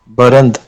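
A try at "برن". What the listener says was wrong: दाल भी हाज़िफ होगा, बेरान।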